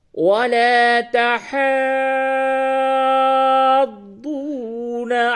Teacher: ضاد کے اوپر تشدید ہے، مشدد ہے، اور یہ مد لازم کے بعد ہے